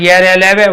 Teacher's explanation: य र ल व वायु नहीं है इसलिए ये अल्पप्राण में है